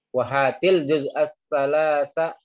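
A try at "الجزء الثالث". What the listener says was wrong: Juz'as Salisa, bukan salasa, salisa. Juz ketiga.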